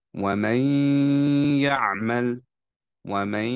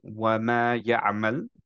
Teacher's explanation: আমরা এখন পড়বো হচ্ছে এইভাবে এটাকে, ওয়ামাই ইয়ামাল, ওয়ামাই, ইয়াটাকে কমপ্লিটলি উচ্চারণ না করে আমরা হচ্ছে নেজাল একটা সাউন্ড বের করব, ওয়ামাই, বিকজ নুনটা ইয়া এর সাথে মার্জ হয়ে যাচ্ছে। ঠিক আছে, আমরা ইয়া উচ্চারণ করব, নুন উচ্চারণ করব না, কিন্তু একটা নেজালাইজেশন দিয়ে